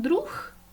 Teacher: якщо говорити нечітко можна почути наприклад друх в кінці звук х